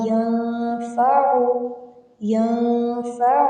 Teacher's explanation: نون پہ غنہ کریں گے، نون ساکن پہ